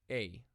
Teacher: top to show that the sound is longer in irassman Etta is pronounced as what is called a diphthong which is actually two vowels put together and produce as one long vowel